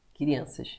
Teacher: Crianças. Esse N está nasalizando a vogal anterior. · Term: nasalizar uma vogal anterior